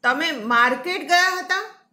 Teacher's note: હવે માર્કેટ શબ્દ ઉપર ભાર મૂકું, તમે માર્કેટ ગયા હતા કે કોઈના ઘરે ગયા હતા, મારો પૂછવાનો અર્થ એ છે. તમે માર્કેટ ગયા હતા, ત્યાં માર્કેટ શબ્દ ઉપર ભાર મૂક્યો છે ને એનો અર્થ બદલી જાય છે.